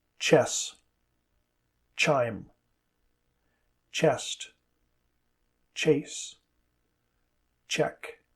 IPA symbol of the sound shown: tʃ